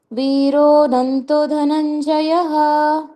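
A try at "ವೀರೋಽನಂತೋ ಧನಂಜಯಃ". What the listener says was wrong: ವೀರೋ ನಂತೋ ತೋ ಎಳಿಬೇಕು.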